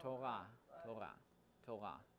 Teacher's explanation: Yes, it's like the French R. It's in the back of your throat. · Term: resh